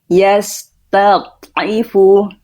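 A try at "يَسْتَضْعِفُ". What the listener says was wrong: Itu putus, dialirkan lagi suaranya. Betul, masih putus dia Bunda. Yastad'ifu.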